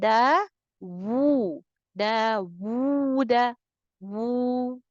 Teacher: द sound of वाव should be extended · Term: एक्सटेंशन ऑफ वाव